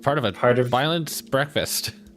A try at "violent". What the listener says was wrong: It sounded like you're saying violence.